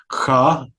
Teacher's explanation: The voiceless velar fricative kha out of the Persian languages